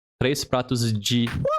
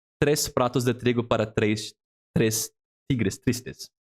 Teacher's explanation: The DE preposition in Portuguese that is largely pronounced not as de, how it looks like, but G.